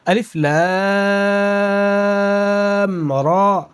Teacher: را پر مد نہیں ہے تو نہیں کھینچیں گے، ایک الف کے برابر کھینچیں گے